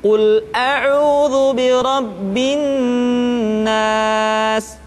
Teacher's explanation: ditahan suaranya ketika mengucapkan nun tasydid